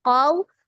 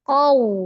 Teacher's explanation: Sempurnakan dulu qaf fathahnya dibuka qaw, kemudian waw sukunnya majukan kedua bibirnya qaw. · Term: huruf lin